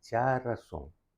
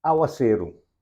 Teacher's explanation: En el caso de ya razón, si vos pronuncié correctamente, vos te reparar que ninguna sílaba aquí está más alto que otro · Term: Even stress words